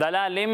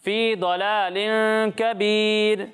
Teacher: دال کو باریک پڑھتے ہیں اور ضاد کو پر پڑھتے ہیں